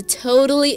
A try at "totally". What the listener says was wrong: So you said totally, right? Where did you get the totally? There is no D here in the word totally.